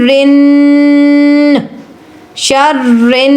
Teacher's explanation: جب نون پر تشدید آتی ہے تو نون غنہ ہو جاتا ہے، یہاں پر آپ نے غنہ کرنا ہے